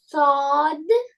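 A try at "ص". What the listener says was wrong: அண்ண போதாதே, போதாது. மேல தூக்குறது போதாது. சுவாது.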